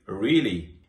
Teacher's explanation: if I say really in a flat voice, it sounds like I don't believe you. But if I say really with my voice going up at the end, it's a genuine question.